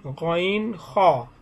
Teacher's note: 3 নম্বর মাখরাজ হলকের শেষ হইতে গইন খ